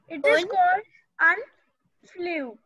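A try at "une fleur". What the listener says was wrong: No, you said flew. No, not flew. Un, fleur. Un, fleur. Un, fleur. Un, fleur. Un, fleur.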